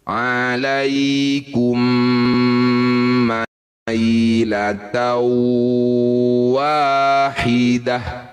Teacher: Ini tak marbutah di ujung bacaan bunyikan ha sukun ketika posisi dihentikan